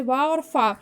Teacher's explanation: दंतोष्ठ है, यानी दांतों और ओठ को मिलाकर